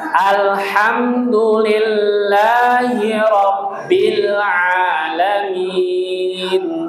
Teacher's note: Rabbil ditahan bil jangan bila. Ya, nggak boleh dipantulkan. Ya, bukan huruf qalqalah.